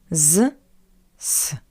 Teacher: consonant Z stands before The Voice voiceless consonant C that's why we pronounce z as its voiceless analog s